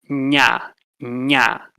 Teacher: Palatal, you use the body of your tongue put it towards the front of your mouth.